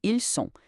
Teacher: Fica ils ont. Já ils sont significa eles são e tem o som puro de S, sem nenhuma ligação sonora extra